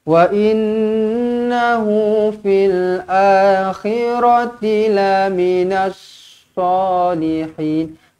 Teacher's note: Wa innahu, nun sabdu kena dengungkan di sini wajibul gunnah.